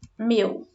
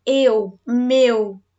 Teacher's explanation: Se eu falo meu para você, eu falei aberto? Não, eu falei um som fechado.